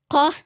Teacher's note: It's basically a ka, but you move the point of contact a little bit further back.